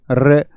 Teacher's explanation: रे को जब आप बोलेंगे तो रे को बोले रे, तो जीभ कांप जाती है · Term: लुंठित व्यंजन